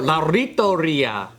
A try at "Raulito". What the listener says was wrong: It's not an L. It's an R.